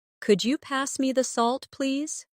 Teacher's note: Listen to the way my voice rises on could you and falls gently at the end.